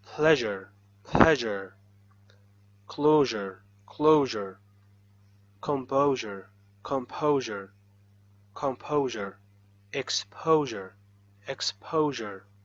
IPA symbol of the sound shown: ʒ